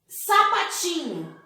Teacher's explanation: sapatinho número de sílabas quatro classificação sílaba sílaba tônica se classificação paroxítona porque a sílaba tônica está em penúltima posição